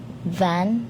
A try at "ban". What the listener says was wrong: Ang, B, naging V. Madalas din yung mali ng Pinoy. Ang B, nagiging V. Ban.